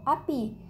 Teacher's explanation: vokal I tinggi atas depan tak bundar